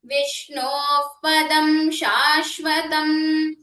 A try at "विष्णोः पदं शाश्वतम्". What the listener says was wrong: When you say the sha, the mudhanya sha, let it be sha, Vishnov padam. The Shanmukha sha, Vishnov padam shashvatam. Let it not sound like Shankara sha.